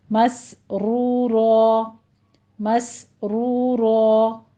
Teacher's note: پیچھے سین کو موٹا نہیں کرنا، اس کو صاد نہیں بنانا، مس سین میں ہمس ہوگا سیٹی کی آواز کے ساتھ ، مس آگے را کو مفخم کر دیں گے، مسرورا، مسرورا،